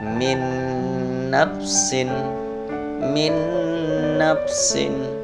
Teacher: Suara nun mati langsung dimasukkan ke dalam huruf nun berikutnya, min nafsin. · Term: idgham bi ghunna